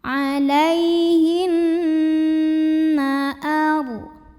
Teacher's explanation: Cara membacanya cukup didengungkan. Bunyi N, tahan sampai ada getaran halus ke hidung. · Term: gunnah musyaddadah